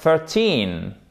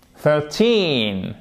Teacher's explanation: accent tonique sur le teen